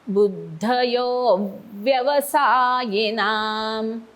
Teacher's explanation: अव्यवसाय म्हणताना अ नंतर व साठी आपला खालचा ओट वरच्या दातांच्या मागे जातो